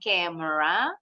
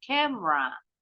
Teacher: Camera, huruf E-nya yang di tengah hilang nih bunyinya. Jadi bacanya bukan camera, tapi camera.